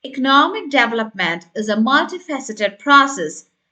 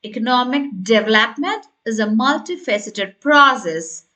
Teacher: You need to stress the word development. Let your voice rise slightly on process.